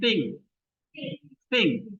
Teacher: bukan T ya, tapi T ada bunyi apa bunyi nafasnya te. Te.